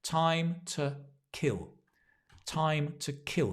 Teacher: notice the pronunciation time to the two becomes ta because we stress time and kill time to kill time to